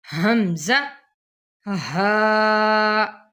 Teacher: آگے ہے ہا، حمزہ حلق کا جو حصہ ہے سینے کی طرف اس سے ادا ہوتے ہیں۔ حمزہ کی آواز سخت ہوتی ہے اور تھوڑی جھٹکے والی بھی ہوتی ہے، حمزہ ہا، یہ ان دونوں کا بھی ایک ہی مخرج ہے۔